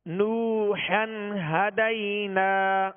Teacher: اور ہا کو ابتدائے حلق سے ادا کریں گے۔ ہا اور ہا دونوں میں فرق کرنا ہے۔